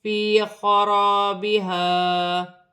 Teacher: وقف کی صورت میں الف مدہ میں کوئی تبدیلی نہیں ہوگی، جیسے لکھا ہے ویسا ہی پڑھا جائے گا